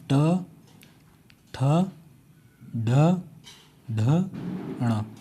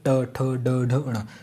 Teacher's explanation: मूर्धन्य वर्ड इसमें क्या है जीभ उलट के लगती है अपनी जीभ